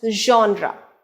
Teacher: so the stress is on the first syllable john